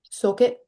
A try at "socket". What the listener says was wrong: you're kind of overdoing it a little bit. So when you say saw, all, drop your jaw more a little bit.